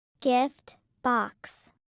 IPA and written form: ˈɡɪf bɑːks (gift box)